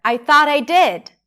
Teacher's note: stress is on 'did', that's lax [ɪ] sound